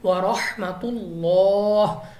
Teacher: لام آف اللہ سے پہلے حرف کے اوپر پیش ہے تو ہم نے لام آف اللہ کو پر پڑھنا ہے